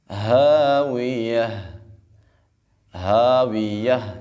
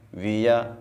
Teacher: آخر میں ہا آ رہی ہے اس کو ہم نے خوب واضح کرنا ہے، ہاویہ، ویہ ایسے نہیں پڑھنا بلکہ ہم نے ہا کے ساتھ پڑھنا ہے۔